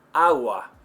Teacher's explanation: between two vowels is very soft in Spanish how soft well if the G in English is a 10 and the beginning G in Spanish is a five then the G between two vowels is a 05